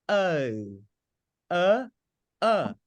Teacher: say go oh and oh British people say oh uh uh they begin with uh and then o